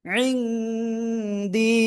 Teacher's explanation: নাকের ভিতরে নিয়ে গুণনা করব